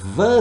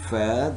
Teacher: one being voiced the other being voiceless